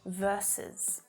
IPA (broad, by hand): ˈvɜrsəs